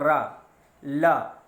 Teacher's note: इसी तरह से ला का उच्चारण भी दंतमूल या मसूढ़ों से होता है। ठीक है, जब हम कहेंगे रा, ला, तो आप देखोगे कि ज़बान की नोक जो है वो आपके मूर्धा से या कहिए दंतमूल से टकराती है।